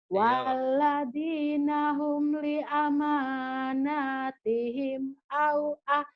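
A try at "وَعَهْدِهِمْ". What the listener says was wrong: au? Li amanatihim wa ahdihim. Bukan au.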